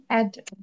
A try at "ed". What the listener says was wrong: অ্যাড কেন হবে? অ্যাড কেন হবে? এ ড অ্যাড হয় না এড হয়? এড হবে, হ্যাঁ এ ড এড হবে।